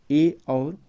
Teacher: अर्ध संवृत स्वर में जो आता है ए और ओ आता है